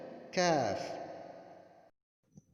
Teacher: Berikutnya adalah kaf, yaitu jenis makhrajnya ini dari pangkal lidah tengah dan langit-langit mulut tengah. Jadi keluarnya huruf ini berasal dari pangkal lidah bagian tengah dan ditekankan pada langit-langit mulut bagian tengah.